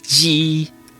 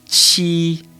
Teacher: you do not use your vocal cords like with the letter J. So whereas J-I would be ji, Q-I would be chi.